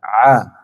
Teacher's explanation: huruf Ain itu adalah Hamzah tetapi perbedaannya adalah berada di sini Jadi huruf Ain ditekan di tengah tenggorokan a Jadi bukan a a bukan masuk ke hidung tapi a